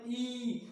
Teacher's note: तो मेरे दोस्तों जीभा के आगे वाले भाग का प्रयोग हुआ